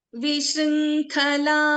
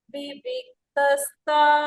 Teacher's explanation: For example, Vishrinkhala, Kha is a Mahaprana. Viviktastha, Tha is a Mahaprana.